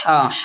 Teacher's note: हमारा ह निकलता है गले से